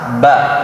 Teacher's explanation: Kalau ba, tertahan, tidak mengalir nafas.